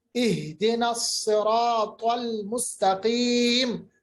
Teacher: صاد اور طا حروف مستعلیہ میں موٹے پڑے جاتے ہیں. مستقیم، قاف بھی حروف مستعلیہ میں.